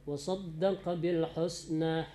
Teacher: Ketajaman baris itu benar-benar dia jadi u, jangan mendekati o.